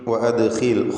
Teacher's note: ഖാഇൻ്റെ ഉച്ചാരണം ഏറ്റവും കുറഞ്ഞ തഫ്ഖീം നൽകിയാണ്, കാരണം അതിന് കസ്റായതുകൊണ്ട്. ദാലിന് ഖൽഖല സുഗ്റ നൽകണം, സുക്കൂൻ വന്നതുകൊണ്ട്.